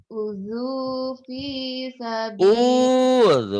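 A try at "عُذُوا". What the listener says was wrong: Bukan uju. Udzu, zalnya jangan terlapu. Udzu.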